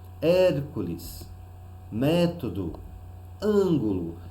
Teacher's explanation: nós percebemos que a antepenúltima é a mais forte, é a sílaba tônica. Portanto, são 3 palavras proparoxítonas.